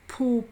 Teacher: the letters pH are pronounced the same as in p and paper but with more aspiration which is breath behind it